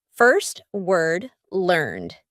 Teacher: in the word heard and learned there's E A but they all sound like e r this is the colored R and it's really typical in American English